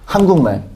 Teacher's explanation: 둘째 음절 이하로 내려갔으니까 짧게 발음해요